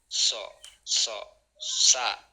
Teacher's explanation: lidah bagian depan yang paling depan itu menyentuh daripada gigi seri bagian bawah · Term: huruf sah